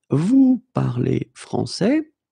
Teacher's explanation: We just need to raise the voice at the end.